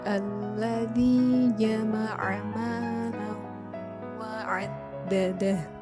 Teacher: Contoh lain, alladzi jama'a malan wa 'addadah, huruf lam berharokat tanwin bertemu dengan wawu, maka cara membacanya memasukkan dengan berdengung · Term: idgham bigunah